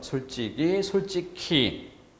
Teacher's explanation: 기역 받침이 뒤로 넘어가면 원래 히읗이 있었으니까 자음 축약이 될 수 있겠죠. 그래서 이번에는 키 이렇게 소리값을 적어야 됩니다.